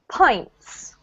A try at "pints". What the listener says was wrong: Pints. Yeah, not paint. That's the stuff that you do a painting with, right? This is pints.